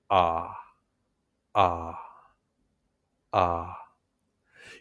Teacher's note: Your mouth should be open with your lips relaxed. In American English, the lips are relaxed and not really rounded. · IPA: /ɑ/